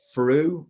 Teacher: all three of them said through with a F sound, as in the word finger at the start.